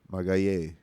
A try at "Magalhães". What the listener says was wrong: No. Magalhães. That's the last syllable that has to be pronounced.